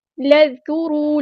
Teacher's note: اسرائیل نہیں کرنا، اسرائیل اذکروا، لام کو ہم نے ذال کے ساتھ ملا دینا ہے، حمزۃ الوصل ہمارا ڈراپ ہو جائے گا